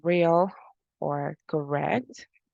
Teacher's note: it's a voiced palatal liquid